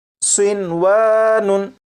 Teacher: नून साकिन को इदगाम करके नहीं पढ़ेंगे